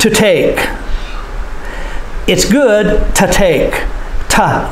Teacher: We say ta instead of to. Ta. We say it very quickly. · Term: reduced form of to